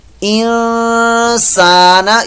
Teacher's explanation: یہاں پر اخفاء کا غنہ ہو رہا ہے، نون ساکن کے بعد سین آ گیا